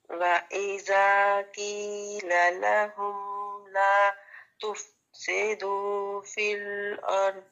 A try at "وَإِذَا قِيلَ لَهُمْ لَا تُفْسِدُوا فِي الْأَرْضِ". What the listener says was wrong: ٹھیک ہے، ایک چیز لا تفسی، سین کی زیر کو آپ اس کو انڈرلائن کریں، یہ باریک ہونی چاہیے، تفسے نہیں پڑھنا اس کو، تفسیدو۔